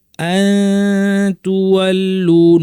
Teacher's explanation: লাইসাল বিয়ররা আন তুওয়াল্লু, নুন সাকিন পর তা আছে, এই বিধানের নাম হচ্ছে ইখফা। জিহ্বাকে আমরা তায়ের মাখরাজের কাছাকাছি নিয়ে যাব, কিন্তু লাগাবো না, উপর পাটি দাঁতের গোড়ায়, এবং নাক থেকে গুন্না করব। তাহলে নাক থেকে গুন্না হবে আর মুখ থেকে তায়ের একটা রেশ আসবে, শুনলে বোঝা যাবে যে পরের হরফটা তা।